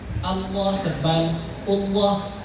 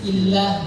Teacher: Sebelumnya itu harakatnya fathah damah jadi tebal.